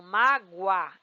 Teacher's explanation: esse U é uma semivogal, este a é uma vogal